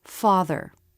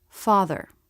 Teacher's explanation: gets absorbed by the next sound for example the word father just go from the th sound right into the r sound without trying to make a separate schwa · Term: syllabic consonants